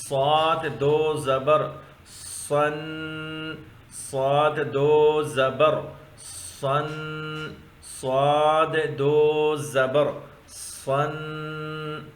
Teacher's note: یہ صاد، یہ سیٹی والا حرف ہے، موٹا حرف ہے، اس کے اوپر 2 زبر ہے۔